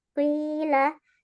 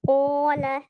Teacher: Apabila dia berharokat kasroh, maka dia berkurang kadar ketebalannya, kadar istilahnya. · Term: tafkhim nisbi